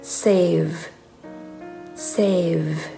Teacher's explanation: ตัว v นะคะตัวมันเป็นเสียง voice consonant ซึ่งจะมีการสั่นที่ลำคอนะคะ